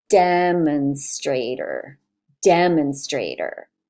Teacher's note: So the stressed syllable is the first one, and then there's secondary stress on this one.